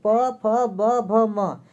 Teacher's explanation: इसका उच्चारण किससे होता है, तो ओठ से होता है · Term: पवर्ग